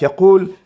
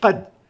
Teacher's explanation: بضمنا للقاف نقلل شيئا ما من حجم تجويف الفم عند النطق بالقاف مقارنة بالقاف المفتوحة في قد